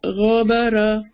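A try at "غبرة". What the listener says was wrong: हाँ, अभी भी ना सबा आइन की थोड़ी और प्रैक्टिस करनी है, हलक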